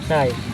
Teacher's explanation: Bunyi agak tinggi, vokal dengan posisi lidah sedikit lebih rendah seperti E dalam say.